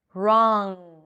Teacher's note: I bring the back of the tongue up and that's the NG